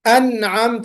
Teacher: سمیع علیم، انعمت، یعنی جو نون کی آواز آ رہی سکونت کے ساتھ، جزم کے ساتھ، سکون کے ساتھ، اس غنے کو ہم ناقص یا ضعیف غنہ کہتے ہیں